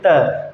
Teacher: जो हमारी जीभ है वो कहाँ लगेगी? दांतों से टकराएगी। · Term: दंत्य व्यंजन